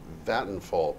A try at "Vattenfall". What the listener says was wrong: I'm sure the V is not a V. I think it's a W.